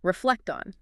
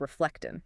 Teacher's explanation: That final T sound in reflect doesn't stop. It transfers. It sounds like reflecting.